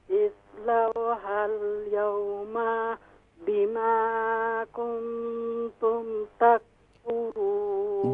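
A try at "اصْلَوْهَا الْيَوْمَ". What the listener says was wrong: जी इस्लौ हल यौम में जो मीम है इसे शॉर्ट साउंड कीजिए। हाँ, मीम को शॉर्ट साउंड करना है क्योंकि मीम के ऊपर कौन सी अलामत है?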